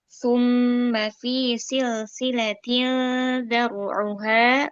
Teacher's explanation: Rok sukun dibaca tebal karena huruf sebelumnya berharokat fathah.